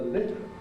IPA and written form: lɪp (lip)